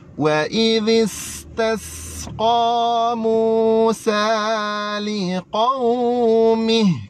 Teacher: Wa idhis tu kita kena bunyi apa? Kita kena bunyi safir, sin.